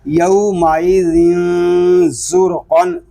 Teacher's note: یومائذن زرقن، زا میں سختی کریں گے، زا میں سیٹی کی آواز آئے گی، لیکن ذال کو ہم نرمی کے ساتھ پڑھیں گے، اس میں سیٹی کی آواز نہیں آئے گی